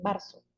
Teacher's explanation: hacen inserción de elementos vocálicos entre dos consonantes cuando no corresponde